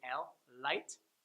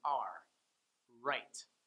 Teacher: your L, your tongue is going to be forward just behind your upper front teeth. L. And then your R, the middle of your tongue is going to go up and back, touching the roof of your mouth, allowing the tip of your tongue to kind of hang a little bit off the roof of your mouth like a bat.